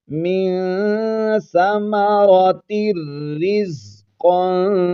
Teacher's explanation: یہاں پر ہم نے نون تنوین کو را میں ملانا ہے اور بغیر غنہ کے ہی ملانا ہے · قاف کو موٹا پڑھیں گے اور اخفا بھی کریں گے، کیونکہ نون تنوین کے بعد آگے حروف اخفا میں سے قاف ہے۔